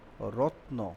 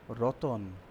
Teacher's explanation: এই মাঝখানে স্বরধ্বনি আসার প্রক্রিয়াটাকে আমরা বলবো মধ্য স্বরাগম